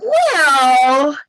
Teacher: Like the word well, when would say it was 3 syllables. · and it just had that New York nasality